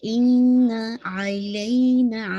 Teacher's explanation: یہ پورا آپ کا نیزل کیویٹی میں ساؤنڈ رن کرنا چاہیے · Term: اکمل غنہ